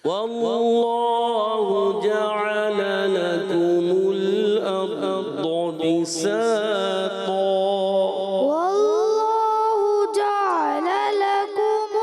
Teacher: عین جو ہے نا آپ کا ساکن ہو رہا ہے، ساکن نہ کرو، عین کی زبر کلیئر کریں۔ واللہ جعل لکم الارض بساطا والله جعل لكم عین پہ آ کر آپ تھوڑا کمزور پڑھتے ہیں.